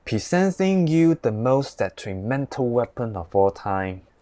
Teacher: the Hong Kong English without any R sound